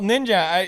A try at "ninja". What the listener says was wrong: say say ninja without the forced J. Just say it like an English person.